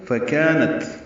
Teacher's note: کاف باریک ہے، کا الف مدہ ہے، 2 حرکات لمبا ہے. نت میں تا ساکن ہے، اس پہ ہمس ہے، تا باریک پڑھیں گے.